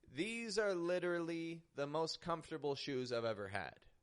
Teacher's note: notice I'm raising my tone on literally to give it that extra emphasis